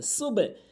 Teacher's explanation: কলকলার নিয়মটি না বোঝার কারণে সুব বলে। এখানে সুবে বলতে হবে।